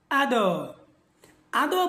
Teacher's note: দালের মাখরাজ হচ্ছে আগা সামনের উপরের যে দুইটা দাঁত আছে সেই দুইটা দাঁতের ভিতরে অর্থাৎ ভিতরের গোলার সাথে লাগাইয়া ডাল উচ্চারিত হয় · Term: ডাল এর মাখরাজ